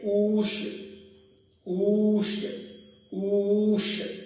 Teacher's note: एक मात्रा, द्विमात्रा और त्रिमात्रा।